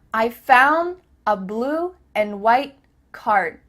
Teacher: Here the word and is being reduced. Just cut off that final D sound.